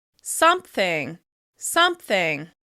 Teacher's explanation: You may also hear this on the word " something," where people will add a /p/ before thing